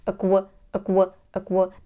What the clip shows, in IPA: əˈkweɪn.təns